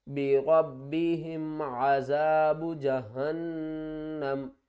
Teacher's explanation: وقف کی صورت میں میم کے اوپر جو زبر ہے یہ ختم ہو جائے گی اور میم ساکن ہو جائے گی